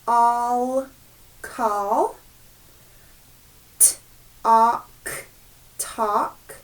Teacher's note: that a and the l together are going to make the ah sound